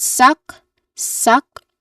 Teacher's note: Yeah, it's a short a sound. It's a weak unstressed a vowel sound. and it ends with a K sound.